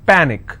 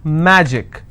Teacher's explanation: Panic is PA Nick which means I will stress on PA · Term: penultimate rule